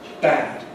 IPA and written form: bæd (bad)